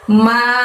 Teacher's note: ma, tapi ma-nya panjangnya bukan 2, panjangnya 5 ya teman-teman. Ma, seperti itu.